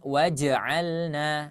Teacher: jangan sampai jimnya menjadi seolah-olah sukun